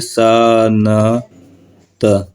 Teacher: हम उच्चारण में पढ़ेंगे स न त तो ऐसे ये आधा आधा न होगा